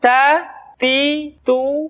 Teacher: dengan gusi gusi gigi seri bagian atas tas kemudian huruf t ketika diucapkan terdengar ada nafas yang mengalir · huruf ta keluar dengan menyentuhkan ujung lidah kita dengan gusi gusi gigi seri bagian atas